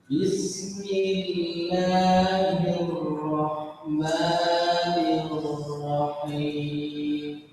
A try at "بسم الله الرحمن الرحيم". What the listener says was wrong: نطقها صحيح، لكن نسبة تفخيمها غير صحيح. فالراء لابد أن تفخم. اسمع: بسم الله الراء. أنت تقول بسم الله الرحمن الرحيم عادية. أنا أريد أن نفخم. بسم الله الراء.